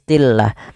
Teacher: mad thi'i dan dia lamut tafkhim lam yang dibaca dengan Maaf di sini lamnya dibaca dengan tipis